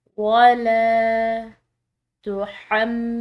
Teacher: یہ میم مشدد جو ہے اس میم مشدد پر ہم نے غنہ کرنا ہے، نون مشدد ہو یا میم مشدد ہو اس طرح سے، تو اس پر ہم نے غنہ کرنا ہے۔